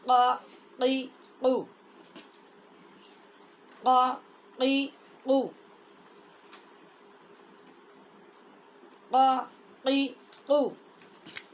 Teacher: قاف ہے زبان کی جڑ اور تالو کا نرم حصہ جہاں سے آواز ٹکرا کے نکلتی ہے، تو یہ آواز پیدا ہوتی ہے قا قی قو، قا قی قو، قا قی قو۔